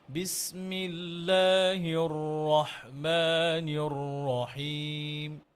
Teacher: রটা আমরা আর একটু মোটা করলে আরো সুন্দর হবে